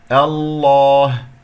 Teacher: إذا أردت أن أبدأ اختبارا باسم الجلال الله سوف تكون مفخمة لأنه سوف تكون مفتوحة الهمزة القطع